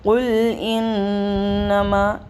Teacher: نون مشدد کا غنہ کرتے ہوئے مد منفصل کو پڑھیں گے